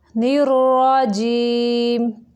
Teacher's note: را موٹا پڑھیں گے کیونکہ یہ مشدد ہے اور اس کے اوپر زبر ہے۔